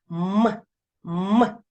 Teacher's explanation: губки смикаються створюють шум і ми не можемо проспівати його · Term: приголосний твердий